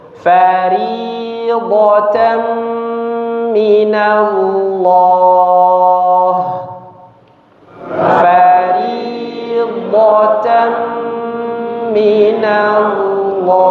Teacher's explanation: didengungkan dengan dengung atau ghunah yang disempurnakan dipanjangkan